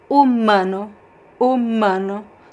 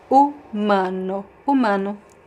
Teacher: Here I would not make the U nasal.